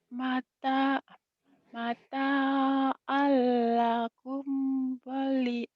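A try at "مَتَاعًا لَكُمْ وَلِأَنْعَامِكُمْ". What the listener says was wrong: bukan walina. ketukar jadi a, ainnya ketukar jadi h. Walian a itu ain ya. Komnya idhar. Mata mata'an mata'an lakum walian amikum walian amikum. Idhar ujungnya. Jangan ditahan.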